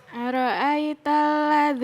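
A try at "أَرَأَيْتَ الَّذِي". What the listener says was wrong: Ulangi. Aro'ai jangan ya. Nanti jadi imalah ya.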